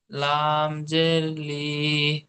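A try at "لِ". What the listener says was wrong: লি টান হয়ে যাচ্ছে।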